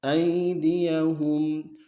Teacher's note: ہم میں میم ساکن غنہ کریں گے